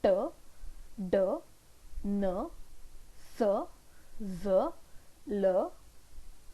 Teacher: For example, when you say t, d, n, s, z, l, in that case the tip of the tongue is touching this alveolar ridge or teeth ridge and hence the sound is known as alveolar